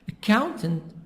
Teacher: Stress is in the middle. The sound is higher in the middle.